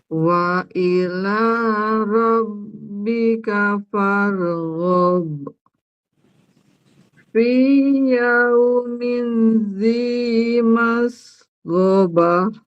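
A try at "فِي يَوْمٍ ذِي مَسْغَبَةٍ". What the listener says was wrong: Dengungnya sedikit lagi. Yaumil.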